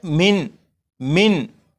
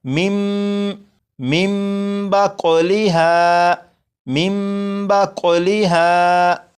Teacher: नून साकिन के बाद बा है तो इस नून को मीम से बदलेंगे और गुन्ना करेंगे